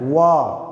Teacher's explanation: व ऐसे बोलते हैं, व दांत और ओठ, इन दोनों के इस्तेमाल से इसका उच्चारण होता है। व का उच्चारण स्थान दंत और ओष्ठ है। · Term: दंतोष्ठीय वर्ण